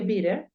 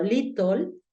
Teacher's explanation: es usual que esa t esa doble t se convierta en un sonido de r